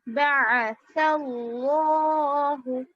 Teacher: حروف مدہ لفظ اللہ پر ہے نا کھڑا زبر، تو اس کو تھوڑا سا کھینچیں گے